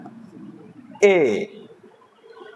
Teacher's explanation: ऐसा स्वर जो क्या है कि कंठ और तालु से मिलकर हम बोलते हैं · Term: कंठ तालव्य